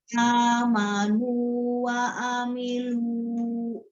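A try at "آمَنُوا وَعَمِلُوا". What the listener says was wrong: Stop, jangan dipanjangin lagi. Wa amilu.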